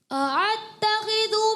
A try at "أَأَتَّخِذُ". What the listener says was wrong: آپ نے دونوں جو ہیں اعتا, عین کی آواز آ گئی, کیا؟ اتخذو, ٹھیک ہے. تو آپ نے حمزہ, دونوں حمزہ واضح کرنی ہے.